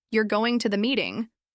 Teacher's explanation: with a rising pitch at the end, it sounds like I'm asking. But if I say the exact same sentence with a falling tone, it sounds like I'm telling you something." Same words, different music, completely different message.